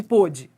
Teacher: A sílaba tônica é o pô. Poder. Porque é a mais forte, não é?